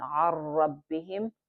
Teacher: This is complete merging, but without any nasal sound.